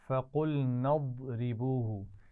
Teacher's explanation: قاف کو موٹا پڑھیں گے اور ضاد کو بھی موٹا پڑھیں گے، لیکن اس کے بعد را باریک پڑھی جائے گی